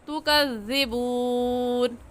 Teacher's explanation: زال کا مخرج یہ ہے کہ زبان کی نوک دونوں دانتوں کے درمیان میں لانے سے زال نکلتا ہے. جب آپ اس طریقے سے زال ادا کریں گی تو وہ خود بخود نرم ادا ہو جائے گا. · زال نرم حروف میں سے ہے تو اسے نرمی سے پڑھیں گے، اسے زال کی جگہ زا نہیں پڑھیں گے. اور نرمی سے پڑھنے کا کیا قاعدہ ہے کہ زال کا مخرج یہ ہے کہ زبان کی نوک دونوں دانتوں کے درمیان میں لانے سے زال نکلتا ہے.